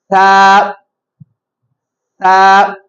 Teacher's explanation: நுனி நாக்கு மேல் பல்லுடைய கீழ் ஓரத்துல படுற மாதிரி